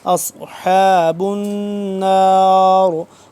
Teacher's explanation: جو نون مشدد ہے اس پہ ہم غنہ کریں گے